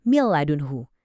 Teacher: Langsung aja, suara nunnya lebur sempurna. Kita bacanya jadi mil ladunhu. Cepet, tegas, dan yang paling penting nggak ada dengung sama sekali.